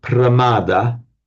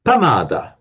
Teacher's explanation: Pali doesn't have a pra, so it becomes pa.